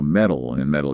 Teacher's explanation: which is that really quick tap of the tongue when it comes between two vowels